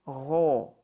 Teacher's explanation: Fatha Muqaddara makes it gho and not gha